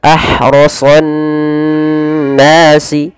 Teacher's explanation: Ro dan so ditebalkan, terutama huruf sad karena dia sifat isti'la dan idbaqnya.